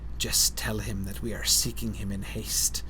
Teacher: Lots of sibilance there, right? Very hissy speech once our attention is drawn to the sound of it.